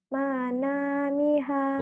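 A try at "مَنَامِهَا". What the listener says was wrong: Bukan. Yang panjangnya na sama ha. Manamiha. Enggak, nanya panjang. Mi-nya pendek. Manamiha.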